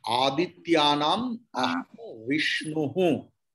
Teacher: Visarga's actual pronunciation is ha. If it comes at the end.